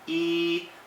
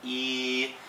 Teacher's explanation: seventh tone is low and long. It's a lot like first tone, but you need to make sure that you're making the comparison.